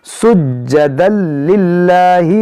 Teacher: جیم حروف قلقلہ ہے اور مشدد بھی ہے، تو خوب جماؤ کے ساتھ اس کو پڑھیں گے · تنوین کے بعد لام یہاں پر ادغام کریں گے